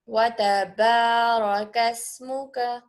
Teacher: کاف باریک ادا کریے